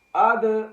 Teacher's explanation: اد، یہاں پر دال پھر قطب مجدن حروف میں سے ہے، اس لیے ہم اس پر قلقلہ کر رہے ہیں